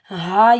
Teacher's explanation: ہا سینے سے ادا ہوگی، ہا کے اوپر کھڑا زبر ایک الف کی مقدار کھینچ کر ادا کریں گے.